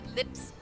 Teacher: you'll notice it's very light and the L is like right up at the front of your mouth that's not a dark L a dark L is